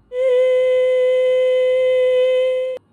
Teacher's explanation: I hear again an air leak it's just at a higher pitch